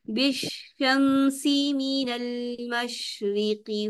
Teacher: जहाँ जीम का मखरज तालु के साथ टच करता है, शीन का मखरज तालु के साथ टच नहीं करता। तो बिशमसी में शीन में आप लोग तालु के साथ टच करें, बिशमसी मीनल मशरिकी।